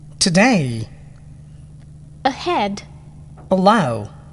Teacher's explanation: two syllable second syllable stressed today ahead allow